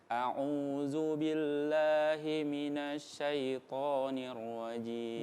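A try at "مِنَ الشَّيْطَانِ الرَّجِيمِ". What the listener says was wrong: Naknya kurang kuat ya. Minasyai. Minasyai. Kanannya di huruf na ya. Minasyai. Minasyaitonir rajim.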